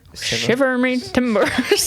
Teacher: Some people put a sh sound at the start.